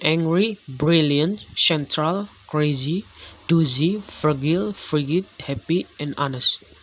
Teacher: The basic Germanic pattern is again trochaic, with stress on the penult, as in angry, brilliant, central, crazy, doozy, fragile, frigid, happy, and honest.